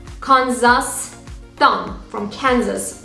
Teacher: So k is a voiceless consonant.